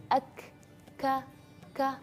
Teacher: Hams itu artinya nafas yang berhembus. Jadi ketika kita melafalkan huruf kaf ada angin, ak, ka, ada angin ketika kita melafalkan huruf kaf maupun fathah, kasrah, dhamma ataupun sukun.